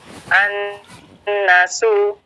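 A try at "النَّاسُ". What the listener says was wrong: An-nas, coba diulang. Didengung lagi, ditahan dengungnya. An-nasu.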